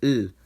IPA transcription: l